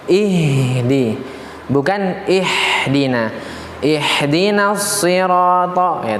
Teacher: Ha besar dari pangkal tenggorokan